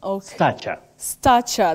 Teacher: that a takes the low front sound a not sound e